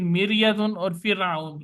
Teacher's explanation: रा से पहले जेर है, जेर होने की वजह से रा बारीक पड़ी जाएगी, पुर नहीं पड़ी जाएगी। फिरआउन की रा भी इसी तरह।